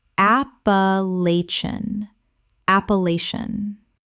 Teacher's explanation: Five syllables with the stress on the third and the ending collapses.